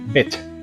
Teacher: Aquí dice, "Cuando tengamos una i, en palabras consonante, vocal consonante, va a sonar como una i corta. con rigidez en los labios.